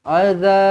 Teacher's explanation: Baik, kemudian azab panjang sebab ada alif. Kemudian lantunkan huruf ba di sini, qalqalah kubra.